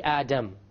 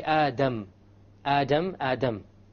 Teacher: So when you try to pronounce the English D, you only use the tip. When you say the Arabic dal, you use the tip along with the upper portion.